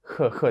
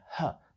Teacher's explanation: робиться де вона робиться на ззаді на піднебінні х х тобто ваш язик торкається піднебіння а от англійська H іде аж звідси аж з грудей х тобто як правильно її вимовити це буде Х звучить як